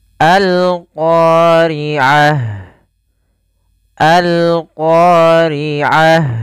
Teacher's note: Yaitu alif lam yang kita tuliskan dan kita baca suara lamnya dengan jelas. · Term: alif lam qamariyah